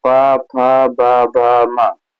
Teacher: प क्या है, प फ ब भ म, इनका उच्चारण स्थान क्या है, ओष्ठ है। आप बोल के देखिए, आपके दोनों ओठ स्पर्श करेंगे